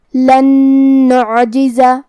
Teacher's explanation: ہم یہ نون کو دوسرے نون میں ملا کے غنہ اور تشدید کے ساتھ ادا کریں گے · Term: الادغام بغنہ